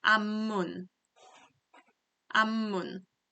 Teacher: We have p 받침 down here, but the pronunciation for this one will be b, so it becomes m sound.